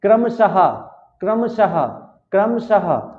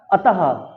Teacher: last में हा का उच्चारण निकलना चाहिए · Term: विसर्ग